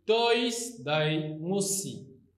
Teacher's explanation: Ici encore, le nu a chuté car le nu ne se conserve pas devant le sigma. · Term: chute du nu